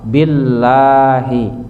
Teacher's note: Lafad jalalah, lafad Allah sebelumnya berbaris kasrah dibaca tarqiq tipis.